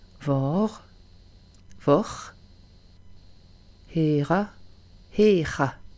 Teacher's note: le R, c'est le son guttural qu'ont les Espagnols ou aussi les Allemands